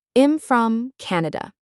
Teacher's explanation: The M sound at the end of I'm slides right into the F of from. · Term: linking